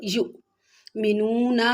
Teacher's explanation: युमिनूना में भी वाव मद्दा है, यानी वाव साकिन उससे पहले पेश वाव मद्दा, जिसको भी थोड़ा सा खींच के पढ़ेंगे